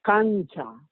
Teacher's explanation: como la Ch es palatal, esa N se hace en esa región